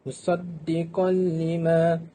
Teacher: Dan di sini mempunyai hukum tajwid iaitu idgham bila gunnah. Apabila tanwin bertemu dengan huruf lam, hendaklah dimasukkan tanwin ke dalam lam.